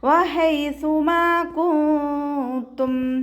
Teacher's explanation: നൂൻ സാക്കിനയെ മറച്ച് വെച്ചിട്ട് മണിച്ചോതി കൊടുക്കുക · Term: ഇഖ്ഫാ